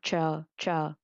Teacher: ZH, CH, SH và R. Thì đây là những cái âm mà mình phải cong lưỡi, để bấn lưỡi lên